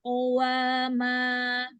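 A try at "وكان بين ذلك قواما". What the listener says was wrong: Wawunya sempurnakan dulu monyongnya. Qawa, qawama, waka, wa. Waw itu monyong. Bukan qawa, tapi qawa, qawama. Bukan tapi qawa, qawama.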